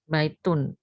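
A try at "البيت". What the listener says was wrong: Tuh, kan ada alnya enggak boleh tanwin. Ahadal bait.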